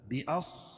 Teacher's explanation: صاد کو موٹا پڑھیں گے کیونکہ حروف مستعلیہ میں سے